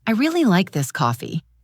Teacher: In this case, the word really receives the emphasis.